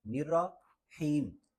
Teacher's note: دوسرا را اور حا کو ملانا نہیں ہے۔ را الگ ہے یعنی نرا، اور حا الگ ہے، حیم، نرا حیم، تو اکٹھا پڑھیں گے نرحیم۔